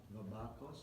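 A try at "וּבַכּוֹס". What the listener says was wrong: Or no, it would be ubakos because you would don't want to break the rule. So u.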